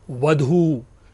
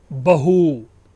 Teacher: वधू की जगह पर बहू शब्द, ध की जगह पर ह हो रहा है।